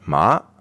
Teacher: the second tone is as if it's a question